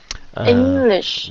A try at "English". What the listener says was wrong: Yeah, very good,